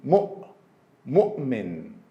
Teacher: when the seat of Hamza is letter Waw, same as in the word mu'min, the sound of Hamza is just glottal stop, oh, oh. So we say mu'min.